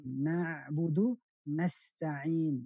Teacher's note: tidak boleh na'budu pakai hamzah, tapi di tengah lidah ain